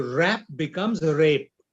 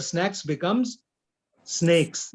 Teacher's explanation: most of the Gujarati speakers. They cannot say the sound a. So rap becomes rape.